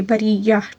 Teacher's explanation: را کو باریک پڑھیں گے کیونکہ را کے نیچے زیر ہے